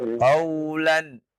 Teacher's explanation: Jangan ditahan nunnya, ya, terlalu lama, ya, karena dia izhar, ya.